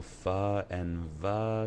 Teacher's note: Fa and Va is labiodental, used with the lips and the teeth.